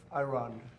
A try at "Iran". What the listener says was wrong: He's still saying it wrong with the I, the emphasis on the I.